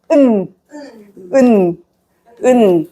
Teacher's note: For final consonant, yeah, the tip of your tongue touch your upper gums.